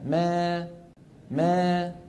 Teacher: الاماله الصغرى يرتفع وسط اللسان قليلا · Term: الإمالة الصغرى